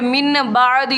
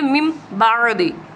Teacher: نون کو میم سے بدل کر پڑھیں گے